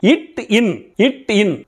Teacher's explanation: நாவின் நுனி அன்னத்தின் நுனியை பொருந்துவதால் பிறக்கின்றன